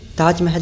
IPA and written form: taːdʒ ˈmɛːɦ(ə)l (Taj Mahal)